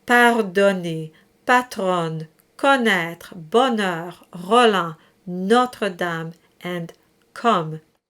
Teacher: when you have a true O there, it's the open O in all the cases.